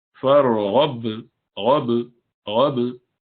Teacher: Ra is in between it and ba is shadid and you stop it.